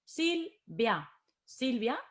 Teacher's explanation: la fuerza de voz en esta palabra está en sil